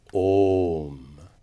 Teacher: the o of om is prolated, that means it's extra long, it is three units in duration · So, om is properly pronounced with an extra long o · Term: prolated o